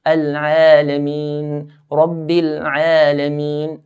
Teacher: The Ain in the word Al-Alameen, we stretch it to two counts. Al-Alameen, Rabbil Alameen, and not more than that.